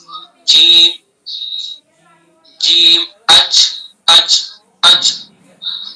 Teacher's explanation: जीम का मखरज जबान का बीच और उसके मुकाबिल ऊपर का तालु